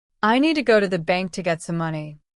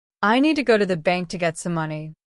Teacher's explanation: I need to go to the bank to get some money. The stressed words are need, go, bank, money. The rest are quick and soft.